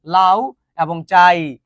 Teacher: এখানে পূর্ণ স্বরধ্বনি হচ্ছে আ। কেন? কারণ এটা পূর্ণ উচ্চারিত হচ্ছে লা।